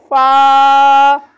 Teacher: ऊपर के दांतों के किनारे और निचले होंठ के तर हिस्से से